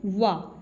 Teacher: दांत और ओठ के स्पर्श से उच्चारित होने वाले व्यंजन को क्या कहेंगे? दंतोष्ठ व्यंजन